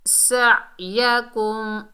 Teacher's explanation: सीन सख्ती और सीटी वाला हरूफ है, इसमें सीटी आनी चाहिए। और आइन को हलक से अदा करेंगे, यानी हलक के दरमियानी हिस्से से